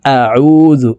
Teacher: আইনের উচ্চারণ হলকের মধ্যখান থেকে চাপ দিয়ে পড়তে হবে কারণ আইনের মাখরাজ হলুকের মধ্যখান থেকে হবে আইন ওয়াও পেশ উজু